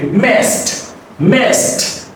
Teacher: It's not messed, no, messed, soft T. So the ending D is a soft T.